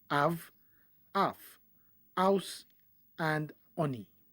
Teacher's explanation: for speakers who have challenge of producing the letter H, it will sound like av, af, house, and oni.